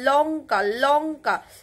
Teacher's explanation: লটা গিয়ে দেখো দাঁতের একদম গোড়ায় গিয়ে ঠেকছে। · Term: দন্তমূলীয় ল